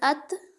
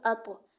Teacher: ات تا کو باریک پڑھا جائے گا، ادھر اط طا کو موٹا پڑھا جائے گا۔ اگر ہم پڑھیں گے ات تو ہمیں کیا سمجھ میں آئے گا کہ تا پڑھا جا رہا ہے کیونکہ باریک پڑھا جا رہا ہے۔